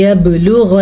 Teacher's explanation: یبلغ با پہ کلکلا ہو رہا ہے